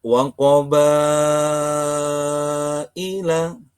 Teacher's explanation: Mad Wajib Muttasil. Panjang bacaannya adalah lima ketukan.